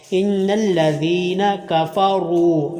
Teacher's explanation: کفروا را مدہ ہے، را کے اوپر پیش آگے واؤ، را کو لمبا کرنا ہے۔ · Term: حرف مدہ